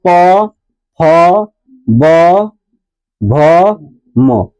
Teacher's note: इसका उच्चारण कहां से आ रहा ओष्ठ से आ रहा